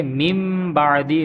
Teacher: نون ساکن یا نون تنوین کے بعد، نون ساکن یا تنوین کے بعد اگر حرف با آ جائے گا تو وہاں اقلاب ہوگا، یعنی ہم نون ساکن یا تنوین کو میم سے بدل دیں گے · نون ساکن اور تنوین کو میم سے بدل کر اخفاء کریں گے، یعنی غنہ کر کے پڑھیں گے۔ اقلاب کا معنی ہوتا ہے بدلنا، اقلاب کا معنی بدلنا۔